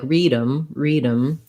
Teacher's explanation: We leave the th off, and it sounds more like read 'em, read 'em.